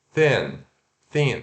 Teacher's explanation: se pronuncia TH desvozeado e curto N